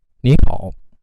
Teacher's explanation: The 3rd and the 3rd tone sequence becomes a 2nd and 3rd tone. So 你 好 become 你 好.